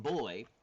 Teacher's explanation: So, for example, the B in boy is voiced.